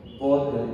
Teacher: Dhad secara makhrajnya dhad ini di pinggir lidah. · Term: huruf dhad